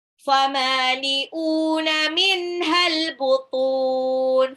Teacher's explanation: Famali'una, mimnya 2 harokat, hamzahnya juga 2 harokat, matabi'i. Minhal, nun sukun ketemu ha itu izhar dibaca jelas.